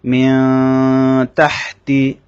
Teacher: লক্ষ্য করুন আপনারা যেমন মিয়া তাহতি আমি যখন এখানে পড়েছি তাহতি তখন আমি নুনটাকে নাকের বাঁশির মধ্যে নিয়ে গুনগুন শব্দ করেছি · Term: ইখফা